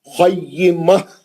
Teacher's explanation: ता मरबूता हा का आवाज आना आखिरी में